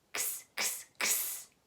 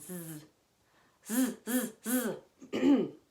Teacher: when I say kss, it doesn't vibrate, but when I say zzz, it does. · when we say kss, we're just using our breath. And when we say zzz, we actually are using our voice, the voice we use to talk with. Zzz, and that's what makes all our vocal cords in our neck make our neck go wiggle, wiggle, wiggle.